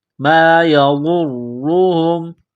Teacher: را کے اوپر پیش ہے، را کو موٹا کرنا ہے